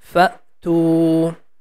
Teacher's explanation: The fa is connecting with hamza, and the sound becomes very quick because the sound is ending at the end of throat.